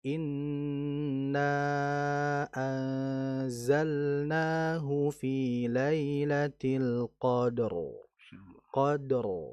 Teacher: ror-nya itu sedikit digetarkan dan ditebalkan sedikit lagi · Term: getaran ro